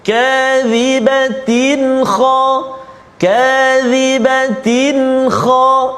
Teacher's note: Nama dia tanwin bertemu dengan kha, izhar halqi, tanpa dengung.